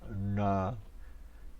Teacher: the tongue is curled back to touch the top of the uh mouth